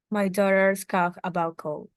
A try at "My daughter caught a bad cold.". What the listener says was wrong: Yeah, it's not cough. My daughter caught.